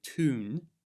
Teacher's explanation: When a Y sound appears after a T, D, S, N, L, or Z sound, I'll put these on the screen here, the Y is omitted. In other words, we don't pronounce it.